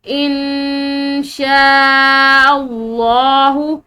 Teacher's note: نون ساکن کے بعد یہ شین حروف اخفاء میں سے ایک حرف یہاں پر موجود ہے، تو یہاں پر نون ساکن پر جو ہے وہ اخفاء کریں گے